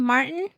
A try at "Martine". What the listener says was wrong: Martine. Long eye, not short eye.